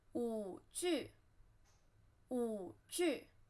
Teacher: 舞, third tone, 剧, fourth tone